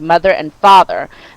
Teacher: the th sound like in the word mother and father that will create a voiced voiced th sound